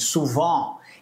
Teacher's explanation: e aí no final você tem esse ENT, a gente fala o on. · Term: som de on